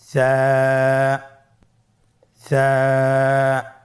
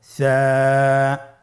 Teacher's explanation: জিহ্বার আগা সামনের উপরের দুই দাঁতের আগার সঙ্গে লাগিয়ে উচ্চারিত হয়